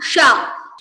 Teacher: when you have Talavya Sha, then your tongue needs to touch your Talu. So the roof of your mouth